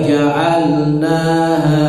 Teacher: lam tidak boleh mantul, na dan ha panjangnya sama